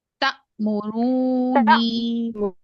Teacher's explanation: मुशद्दद हाँ, नून मुशद्दद मीम मुशद्दद 3 counts. ठीक है, रू को आपने 6 काउंट्स खींचा और नून पे 3 काउंट का गुन्ना किया